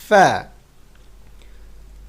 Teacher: উপরের দাঁত নিচে ঠোঁটের সাথে লেগে বাতাস বের হবে।